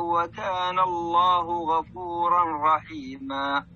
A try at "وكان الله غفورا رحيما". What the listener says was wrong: لا هنا إدغام بدون غنة. غفورا رحيما.